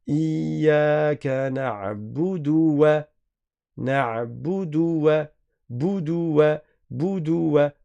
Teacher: On a une dhamma suivie de la lettre waw. Donc il faut bien faire attention à ne pas faire une prolongation parce que le waw il a une fatha. On ne dit pas na'budu, na'budu.